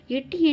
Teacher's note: இரு மெய்களும் நாவின் நுனி அன்னத்தின் நுனியை பொருந்துவதால் பிறக்கிறது